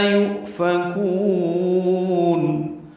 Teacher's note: یؤفکون میں حمزہ ساکن جھٹکے سے ادا ہوگا